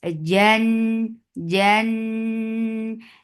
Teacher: there should not be CH sound in Jim